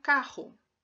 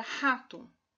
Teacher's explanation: é um som em que há um estreitamento da passagem de ar na região velar da boca. Esse estreitamento na passagem de ar produz um efeito de fricção, por isso a consoante é chamada de fricativa. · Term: consoante velar